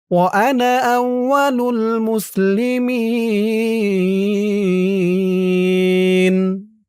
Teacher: মুসলিমিন এখানে অক্ফ করার কারণে জেরের পরে ইয়া সাকিন এক আলিফ টান, ৩ আলিফ হয়ে গেছে মধ্যে আরজি।